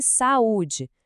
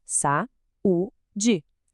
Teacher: São duas vogais que estão lado a lado, mas elas não ficam juntas na mesma sílaba. É como se cada uma precisasse de seu próprio espaço, do seu próprio cômodo. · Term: iato